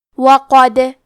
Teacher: کلمت وقد میں حرف القاف کو موٹی آواز میں پڑھیں گے. دال پہ جزم ہے تو کیونکہ دال بھی حروف القلقلہ میں سے ہے تو ہم یہ حرف کو ہلاتے ہوئے یہ کلمہ کو پڑھیں گے.